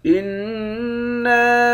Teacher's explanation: نون مشدد پر غنہ کریں گے۔ نون کے بعد الف ہے، اس الف پر مد ہے، اس مد کو 3 الف کی مقدار کھینچ کر پڑھتے ہیں۔